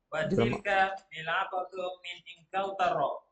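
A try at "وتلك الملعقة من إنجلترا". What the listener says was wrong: Watilkal alif lam qamariyah. Masuk. Alnya dengar. Watilkal mil'aqatu min Inkaltarra. Watilkal mil'aqatu min Inkaltarra. Inkaltarra. Itu ra-nya tasydid.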